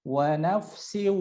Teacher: kalau siu ya itu belum melibatkan rongga hidung ya, belum gunah